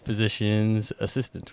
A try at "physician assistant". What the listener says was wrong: Yeah, physician assistant. There's no S at the end of it. Yeah.